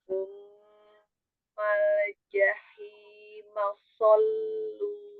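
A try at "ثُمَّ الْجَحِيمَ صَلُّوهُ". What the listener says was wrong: Iya, pas lamnya yang sukun Umi jangan dilepas langsung ya, alir sedikit. Tsummal ja alja tsummal jahima sallu.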